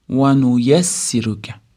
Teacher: vauyassiruka hech qanaqa cho'zish hech narsa yo'q